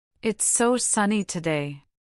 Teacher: Can you feel the emphasis on so? It adds a layer of genuine feeling.